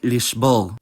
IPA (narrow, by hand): liʒ̥ˈbɔʁ̞